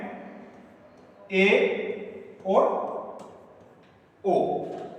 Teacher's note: अर्धसमर्थ स्वर कौन सा होता है कि उच्चारण करने पर मुख का संवृत से थोड़ा अधिक खुलना